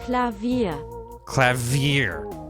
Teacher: they put the emphasis on the second syllable more